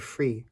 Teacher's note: Tagalog E is the close front vowel, just like the English vowel in the word free.